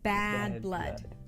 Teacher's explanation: Here we have the as in cat, a forward front vowel.